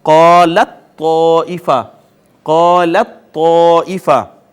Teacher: ناظرین یہاں دیکھیے تا اور طا اکٹھے آ گئے ہیں، تا اور طا اکٹھے آ گئے ہیں، دونوں ہم مخرج ہیں، ایک ہی جگہ سے ادا ہوتے ہیں · اور اگر آپ غور فرمائیں پہلا حرف ساکن ہے دوسرا متحرک ہے، قاعدہ یہ ہے کہ ساکن کو متحرک میں ضم کر دیں، یہ شد آ گئی، اب تا کو طا میں ضم کر دیا، لہٰذا اب لت طائفۃ کی بجائے ہو جائے گا قالت طائفہ، قالت طائفہ۔ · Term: ادغام متجانسین